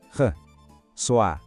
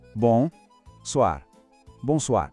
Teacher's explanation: tem o tal do R francês que às vezes assusta, mas é só um som que vem lá da garganta, como se fosse um gargarejo bem de leve